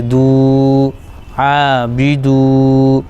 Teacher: واو میں ملا دیں گے دال کو، لیکن یہاں پر واو مدہ ہو جائے گا، ایک الف کھینچیں گے